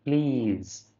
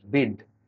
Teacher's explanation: ಪ್ಲೀಸ್ ಅಂದ್ರೆ ದೀರ್ಘ ಇ ಬರುತ್ತೆ. ಬಿಡ್ ಇಲ್ಲಿ ಈ ಸಣ್ಣ ಇ ಬರುತ್ತೆ.